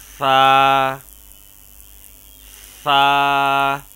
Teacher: سا کو نرمی سے ادا کریں گے اور اس میں سیٹی کی آواز پیدا نہیں ہونی چاہیے